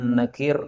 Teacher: ini juga idgham, nun ketemu nun